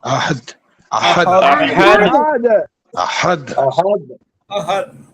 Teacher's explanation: দাল কলকলার হরফ কলকলা হবে বেশি